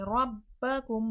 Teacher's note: ربکم، رو پہ زبر ہے، رو کو تھوڑا موٹا کر کے پڑھیں گے۔ ربکم، با میں قلقلے کی صفات واضح ہوگی، آواز پلٹ کر سنائی دے گی